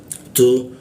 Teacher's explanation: bocor halus di ujung lidah bertemu gigi dia. Tu, huruf ta dia.